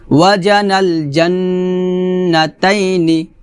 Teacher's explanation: জিমটা জিব্বার মধ্যখানে উপর তালুর সঙ্গে লাগিয়ে উচ্চারণ করতে হবে